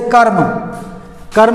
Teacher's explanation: जैसे कर्म, कर्म में क्या हुआ, माँ के पहले र का उच्चारण हुआ, लेकिन र आधा है, माँ पूरा है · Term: रेफ